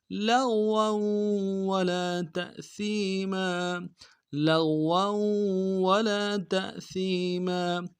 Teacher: لام کو غین کے ساتھ ملائیں گے، غین کو موٹا کریں گے